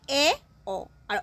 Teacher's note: অর্ধবিবৃত ধ্বনি মানে অল্প ওপেন হবে